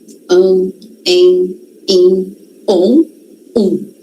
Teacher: São sons nasalizados. Passa pelo nariz da gente, tá? O ar.